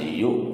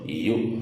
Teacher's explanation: Hamzah sukun karena hamzah punya sifat sidah yang tertahan, jadi ini dibacanya dihentak ya, tertahan yu.